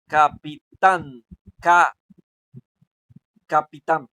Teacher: Tan es la que suena más fuerte. Entonces, por lo tanto, tam viene siendo la sílaba más fuerte y además está en el último lugar. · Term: sílaba tónica aguda